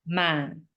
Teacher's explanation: The low-falling tone, ma, means but.